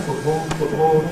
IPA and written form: ˈfʊʔbɔːɫ (football)